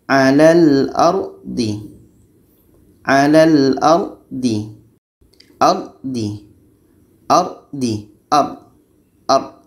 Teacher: ra mati sebelumnya baris di atas. Kita baca dengan tebal.